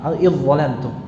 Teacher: melebur total, ya. Tidak tersisa dari huruf pertamanya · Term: idgham kamil